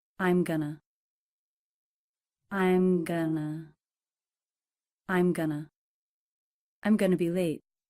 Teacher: The stress is on the first syllable, and the second syllable is reduced, the sound, very short.